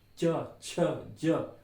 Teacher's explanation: बोलते हो तालू पे जा रही है जीभ तालव्य है